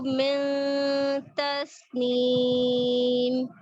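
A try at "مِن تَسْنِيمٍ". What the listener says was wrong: اچھا، میم کی کسرہ کو معروف کریں.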